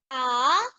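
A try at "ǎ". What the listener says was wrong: नहीं, पहले नीचे और फिर ऊपर एक कर्व बनेगा।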